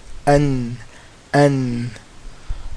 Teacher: Noon is from the front tip of the tongue, right here, okay, touching the gums of the front two teeth. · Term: makhraj of noon